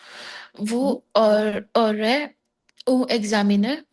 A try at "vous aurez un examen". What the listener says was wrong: vous aurez, hein, la liaison, vous aurez un examen. Vous aurez, EZ. Vous aurez un examen.